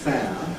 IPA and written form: feə (fair)